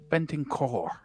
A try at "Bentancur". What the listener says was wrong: You got to roll that. That's the key. Bentancur. Just a little brr at the end.